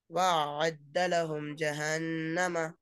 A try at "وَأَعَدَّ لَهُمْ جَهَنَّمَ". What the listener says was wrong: وَأَعَدَّ لَهُمْ جَهَنَّمَ. آپ نہیں، تھوڑا آپ سختی کرنے کی کوشش کر رہے ہیں. آپ ایسی ادا کریے، ادا ہو جاتا ہونے، زور مت لگائیے اس پہ. تھوڑا سکون سے پڑھو، برابر ہو جاتا ہونا.